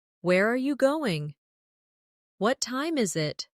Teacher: for information questions, those starting with who, what, when, where, why, how, the tone often falls at the end.